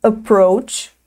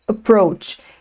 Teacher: Esse A do início agora vai ter o som do schwa.